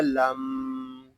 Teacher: یہاں میم مشدد ہے، اس کو غنے کے ساتھ پڑھیں گے